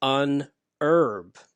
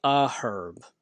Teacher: in British English, they do pronounce the H and they call it a herb because it's herb with the H sound first.